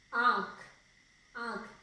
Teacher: तो नाक और गले दोनों से इसका उच्चारण होता है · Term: अनुनासिक